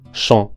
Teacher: Tenemos en la primera palabra champ, la vocal nasal en. Es como la O del español, considerablemente más abierta, en, y nasalizada, champ. La segunda palabra es Élysée.